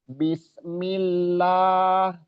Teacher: Lamnya dua makanya butuh ditekan di situ. Tapi jangan ditahan, jangan dilamakan ya. Jadi ditukup ditekan. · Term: lam bertasdid